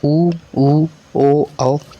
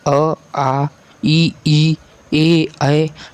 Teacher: ठीक है दोस्तों, इसे आवृत्तमुखी कहते हैं। जैसे वृत्तमुखी जिन स्वरों के उच्चारण में ओंठ गोलाकार हो जाता है